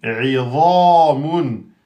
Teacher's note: on a donc ri, aminci, za, emphatique, et avec le alif de temps, et mun.